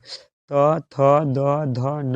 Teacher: बोलिएगा त, जबान में सटेगा, थ जबान में सटेगा, द जबान में सटेगा। त, थ, द, ध, न ये बोलिएगा तो जबान में जाके दांत सटेगा, इसलिए इसका आंसर दंत।